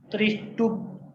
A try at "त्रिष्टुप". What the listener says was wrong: त्रि छोटी है ना, त्रिष्टुप।